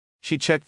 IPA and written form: ʃi ʧekt (She checked)